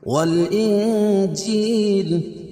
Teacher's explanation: والانجیل اخفا حقیقی کیونکہ نون ساکن کے بعد حروف اخفا کے 15 حرفوں میں سے جیم ہے تو یہاں ناک میں آواز کو چھپا کر پڑھیں گے